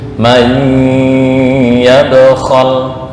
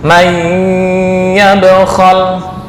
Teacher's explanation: May sampai masuk ke khayshum atau hidung. May yabkhal, ditutup dulu hidungnya. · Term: idgham bi gunnah